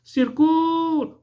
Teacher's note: o C e o U, se você observar, foi, né, pronunciado com maior intensidade, com maior força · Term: sílaba tônica